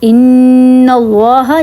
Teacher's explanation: ان اللہ جب آپ پڑھیں گے تو آپ کی زبان بھی اوپر تالو کے ساتھ ٹچ ہوگی اور ناک میں آواز جائے گی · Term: غنہ